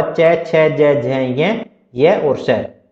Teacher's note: इनका जो उच्चारण स्थान होता है वो तालु होता है